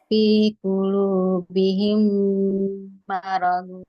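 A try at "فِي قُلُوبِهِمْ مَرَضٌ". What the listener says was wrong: Nah, wah, jangan marode. Ah, itu mah kol-kola, jangan nggak boleh. Ah, jangan panjang. Nggak ada tanda panjang. Marod langsung.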